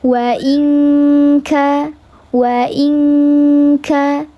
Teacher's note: Dileburkan, disamarkan disertai dengan ghunah tiga harakat. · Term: ikhfa hakiki